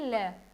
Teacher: हवा होती है जो मुख की वो दोनों तरफ से निकलती है यानी साइड में से निकलती है। मुंह में सामने वाला एकदम हिस्सा बंद हो जाता है ल, क्योंकि वहां पे आपकी जीभ जो है वो मुड़ के वापस मुड़ के और उसके सामने जो है अड़ जाती है, ठीक है, और उसके साइड में से फिर हवा निकलती है, ठीक है। · इसमें क्या होता है, जो आपका मुख द्वार है यानी मुंह है, वो जब हम ल का उच्चारण करते हैं तो बिल्कुल बंद हो जाता है सामने से, मुख द्वार यानी सामने से, और हवा होती है जो मुख की वो दोनों तरफ से निकलती है यानी साइड में से निकलती है। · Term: पार्श्विक व्यंजन